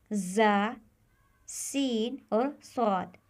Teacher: साद यह हरूफ उस वक्त अदा होते हैं जब जबान की नोक नीचे वाले दांतों के किनारे को छूती है और आवाज दांतों से निकलती है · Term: हरूफ सफ़रिया